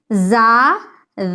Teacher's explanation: زا میں آپ کی جو آواز ہے اس میں سیٹی کی طرح تھوڑی آواز نکلنی چاہیے، زا سیٹی کے جیسی آواز نکلنی چاہیے۔